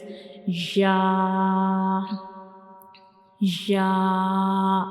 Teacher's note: So this is the shape of ya, and ya has no dot, and ya is pronounced when we touch the tip of the tongue, when we touch the center of the tongue to the upper hard palate to pronounce ya